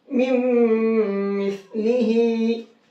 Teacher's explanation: इस नून को खत्म कर देंगे और साथ में गुन्ना करके पढ़ेंगे